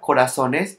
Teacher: when it becomes plural, the intensity of the voice goes to the penultimate syllable, and since it ends in is, it no longer carries accent mark. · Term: grave word